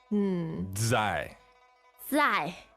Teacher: the Z, as we know in Chinese, makes like a DZ sound